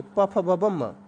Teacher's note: पा वर्ग के, प फ ब ब म, इन सब में ओष्ठ की जरूरत पड़ती है।